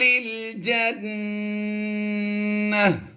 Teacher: قیل ادخل الجنہ، نون مشدد میں ہم نے غنہ کرنا ہے اور گول تا پر جو بھی حرکت ہو، جیسے یہاں پر آپ زبر دیکھ رہے ہیں، زبر کی بجائے دو زبر ہوں، دو زیر ہوں، دو پیش ہوں، یا سنگل زبر ہو، سنگل زیر ہو یا سنگل پیش ہو، کچھ بھی ہو، حالت وقف میں گول تا کو ہا ساکن سے بدل دیتے ہیں۔ یعنی ہم نے یہاں پر اسے ہا بھی بنا دینا ہے اور گول تا کے دو نقطے اور زبر وغیرہ بھی ہم نے جزم سے بدل دینی ہے، تو یہ ہا ساکن ہو جائے گی۔